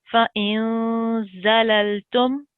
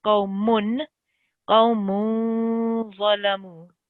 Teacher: And can you do the second one? Okay, so when you do the nasal sound, you're not supposed to hear the n.